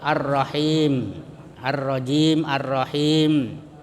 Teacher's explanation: panjangnya itu biasa 2 harakat, 2 ketukan, tak tak ya, 2 detik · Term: mad tabi'i